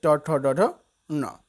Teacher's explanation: ये वर्ण मूर्धा से बोले जाते हैं। और मूर्धा से बोले जाने के कारण जो वर्ण है इसको मूर्धन्य भी कहा जाता है।